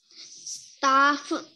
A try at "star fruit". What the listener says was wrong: Lại foot, đọc thành foot rồi. Đấy, được chữ đầu thì mất chữ sau, con tự sửa đi, tự cười khi nào con nói yes thì được.